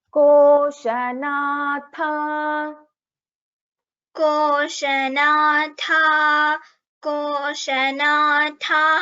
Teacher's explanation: Koshanatha, tha is a Mahaprana and Dirgha here.